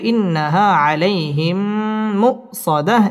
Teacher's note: মিম সাকিনের বামে মিম আসছে ইদগামে মিসলাইন গুন্না করে পড়তে হবে